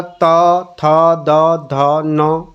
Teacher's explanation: दंत्य को बोल के देखिएगा, त थ द ध न, दांतों को जीभ स्पर्श करेगी।